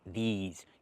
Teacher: Use the long e like green beans plus the zz sound like in zebra